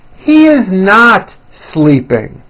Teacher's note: notice how my voice comes down at the end of a sentence that is not a question